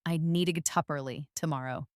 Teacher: Need to often becomes need-a. Get up becomes get-up. This is called a linking sound, and it's something your ear needs to get used to.